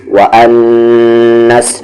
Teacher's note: نون پہ غنہ ہو رہا ہے کیونکہ تشدید ہے اس پر